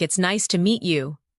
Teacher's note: When you listen to sentences like "It's nice to meet you," notice the rise and fall of the tone. The voice goes up slightly at nice and falls gently at you.